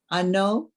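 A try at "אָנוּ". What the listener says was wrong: Close. Look at that vowel at the end.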